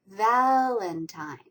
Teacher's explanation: The last syllable has a little bit of a stress as well.